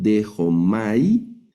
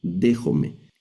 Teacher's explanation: Son estas letras alfa yota. Ese diptongo se pronuncia como e, lo vamos a leer como e.